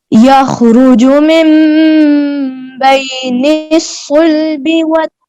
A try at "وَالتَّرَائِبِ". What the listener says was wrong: نہیں آپ بیٹا آپ پڑھ رہی ہیں والترائب نہیں وتا علیحدہ ہے را علیحدہ ہے تا کو را سے ملانا نہیں یخرج من بین الصلب والترائب